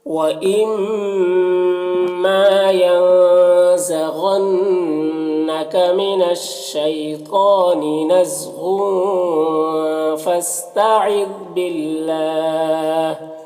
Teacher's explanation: غین حروف مستعلیہ میں سے پر پڑھیں گے، نون مشدد غنہ ہوگا.